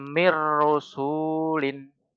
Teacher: Jadi nun sukunnya hilang, mi-nya, mim kasrohnya langsung ke ro. Jadi ro-nya Harusnya ada tasdidnya itu. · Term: idgham bila guna